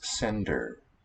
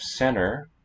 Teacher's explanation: The D one has to be a stop, but the voiceless T one can delete when it's after an N.